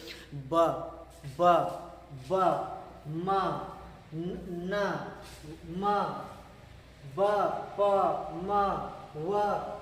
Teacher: ये बोलेंगे तो आपके दोनों होंठ से आवाज निकलेगी, दोनों होंठ सटेगी, टच करेगी, तब उसे हम कहते हैं बाइलेबियल साउंड कहते हैं।